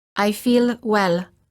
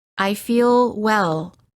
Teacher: The American L is softer and longer than the L sound of many other languages.